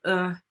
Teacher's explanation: a back rounded sound like uh